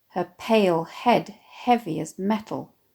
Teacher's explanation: a prevalence of stressed syllables again, “Her PALE HEAD HEAV-y as MET-al”, the three one after the other slowing the reader right down